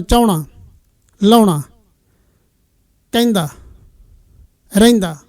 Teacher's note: ਉਹ ਹ ਵਿੱਚ ਵਿਅੰਜਨ ਵਜੋਂ ਨਹੀਂ ਹੋਏਗਾ ਇੱਕ ਸੁਰ ਵਜੋਂ ਹੋਏਗਾ।